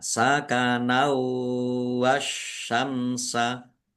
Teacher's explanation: Sakanau fathah tanwin bertemu dengan huruf wau. Bacaan idgham bighunah. Masuk dengan mendengung. Yaitu mendengung wau. Ditahan biar tampak mendengungnya. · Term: idgham bi gunnah